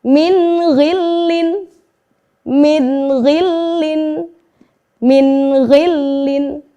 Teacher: kita baca jelas nun sukun dengan ghain, tidak ada terdengar bacaan yang samar ataupun yang dengung, ya. Maka nun sukun harus kita baca dengan jelas, kemudian diikuti dengan huruf ghain, kita juga harus membacanya dengan jelas.